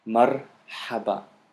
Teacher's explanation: there is a pause between, you know, the first syllable mar, and then ha ba